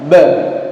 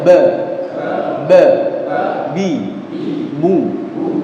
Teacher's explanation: Huruf ba itu juga tidak ada hamznya, jangan pi, tapi ba. Huruf ba tempat keluarnya adalah kedua bibir ditemukan.